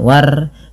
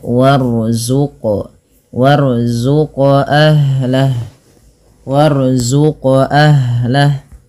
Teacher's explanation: ro-nya dibaca dengan tebal ya, jangan dibaca dengan tipis, jangan war, tapi dia warzuq, warzuq ahlah, warzuq ahlah.